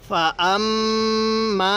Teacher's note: এই মিমের মধ্যে গুন্নাহ করবো